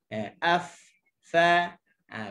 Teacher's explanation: keluar daripada hujung gigi atas dengan bibir bawah yang basah. Af, fa, bibir bawah yang basah kat dalam. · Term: huruf fa